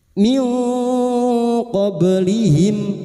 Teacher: kita samarkan bunyi nun sukun dan mendengung selama tiga harakat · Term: ikhfa hakik